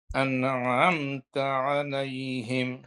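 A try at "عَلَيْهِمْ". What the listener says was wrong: আলাই, এমন টান হবে না, আলাইহিম, আলাইহিম, আলাইহিম, তাড়াতাড়ি।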